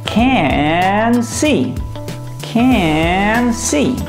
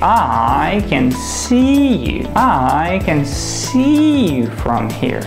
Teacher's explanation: I want you to imagine it's not can see but ca nsee.